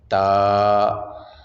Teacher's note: تا کا مخرج ہے زبان کی نوک اوپر والے جون سے بڑے دو دانت ہیں، ان کی جڑ کے ساتھ آپ ٹچ کریں گے، جو اندر سائڈ پہ مسوڑے ہیں وہاں آپ ٹچ کریں گے تو وہاں سے یہ تا ادا ہوگا